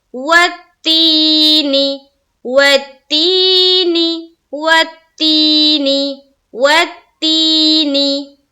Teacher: یا ساکن سے پہلے کوئی بھی حرف ہو اور اس کے نیچے زیر آتی ہو تو وہاں پر یا مدہ کا قاعدہ بنتا ہے، اور یا مدہ کو ہم پڑھتے ہیں ایک الف کے باقدر کھینچ کر، اسی لیے یہاں پر پڑھیں گے والتینی، والتینی، والتینی، والتینی۔